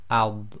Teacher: it's thick letters so the back of the tongue will come up a bit